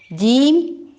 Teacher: جیم زبان کا درمیانی حصہ اور اوپر کا تالو، یہ اوپر کی طرف تالو کی طرف اٹھے گی زبان تو جیم ادا ہو جائے گا.